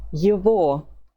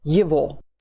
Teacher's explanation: The letter G that you find in the middle of the word is not pronounced G, but V.